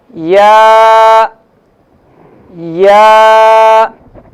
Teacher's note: یا جو ہے بحالت مدہ منہ کے خالی حصے کی ہوا سے ادا ہوتا ہے